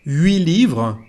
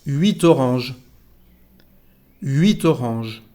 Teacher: 8 livres. No se pronuncia la T cuando hay una consonante que sigue.